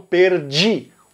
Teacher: Como Pernambuco, ele não faz a palatalização da letra D. Todos os outros falam perdi. O D vira um J. Mas em Pernambuco isso não acontece, mesmo quando tem uma letra I depois.